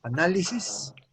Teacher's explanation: Esa es una esdrújula. Análisis, acento en la segunda A.